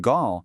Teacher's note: In the masculine grand, the D is totally silent